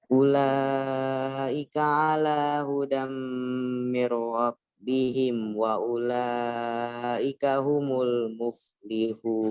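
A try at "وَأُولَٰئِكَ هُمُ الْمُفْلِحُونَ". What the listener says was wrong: Antum panjangin dikit lagi yang wa ulaika. Kurang dikit aja. Yang wa ulaika.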